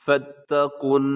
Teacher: اس کو فتا نہیں پڑھنا، یعنی لمبا نہیں کرنا، کیونکہ اس کے درمیان میں جو الف ہے وہ نہیں پڑھا جائے گا